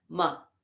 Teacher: the ma is short and it's followed by a single consonant so it's a short or a light a laghu sound